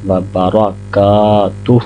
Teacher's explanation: کاف کے ساتھ الف مدہ ہے تو اس کو 2 سیکنڈ کے لیے لمبا کریں گے، وبرکاتہ۔ اگر آپ وقف نہیں کرنا چاہتے تو ہا کو بھی 2 سیکنڈ لمبا کریں گے، وبرکاتہ۔